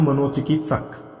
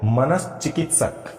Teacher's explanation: मनश्चिकित्सक ये लीजिए, इसका शुद्ध रूप ये परीक्षा की दृष्टि से, ये किसी भी कंपटीशन की दृष्टि से शुद्ध रूप है मनश्चिकित्सक। इस विसर्ग का यहां पर आकर के ये तालव्य श व्यंजन हो रहा है